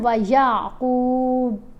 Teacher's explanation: اگر ہم پڑھتے ہیں نا وَيَعْقُوبُ تو کلکلا ادا نہیں ہوا، با تو پڑھی گئی لیکن کلکلا نہیں ہوا کیونکہ آواز کو ہلایا نہیں ہم نے